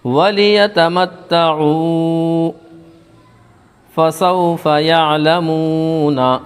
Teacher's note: تا کے اوپر تشدید والے حرف کو 2 مرتبہ پڑھتے ہیں۔ تشدید کی آواز میں ایک قسم کی سختی ہوتی ہے۔